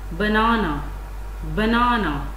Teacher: First syllable has secondary stress as its level of loudness was at number 2. And the third syllable is pronounced very softly. So this is unstressed syllable.